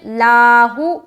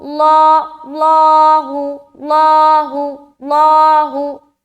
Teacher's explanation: لاہو یہ باریک ہے، لاہ یہ موٹا ہے